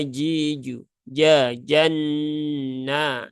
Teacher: Nah, huruf jim ya huruf jim dia ada di tengah lidah langit-langit atas